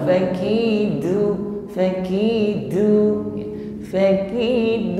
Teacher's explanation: huruf dal ini syiddah sifatnya, jadi kuat pengucapan hurufnya. Dan di, du, jangan diucapkan dengan lemah.